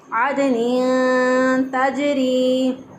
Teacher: इख्फा हकीकी इसको बोलते हैं कि यहाँ पर नून साकिन की आवाज़ को पोशीदा रखते हुए एक अलिफ के बराबर गुन्ना करते हुए अदा करेंगे।